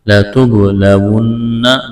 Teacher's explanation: نون مشدد ہے، آواز ناک میں چھپائیں گے، غنہ کریں گے